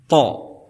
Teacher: Jadi makhraj daripada huruf ta ini berada di ujung lidah bersama pangkal-pangkal gigi-gigi seri